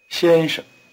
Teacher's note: the first syllable is in the high tone the second is in what we call the neutral tone notice that it is weak and short and then its pitch is rather low listen to mr. again